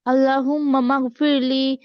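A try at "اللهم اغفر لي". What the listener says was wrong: মাগফিরলি হবে না, আল্লাহুম্মা গফিরলি, মিম একবার, মা মা দুইবার হবে না, আবার আল্লাহুম্মা।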